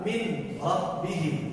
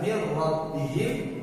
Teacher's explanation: Adapun yang kedua, min rabbihim, yang dibaca mir rabbihim, maka dia berubah, bahkan nunnya hilang, rohnya yang asalnya satu menjadi tasydid menjadi dua.